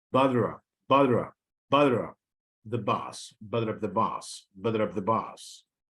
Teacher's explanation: there is flapping because the ta sound occurs between two vowels. So it's pronounced as flat.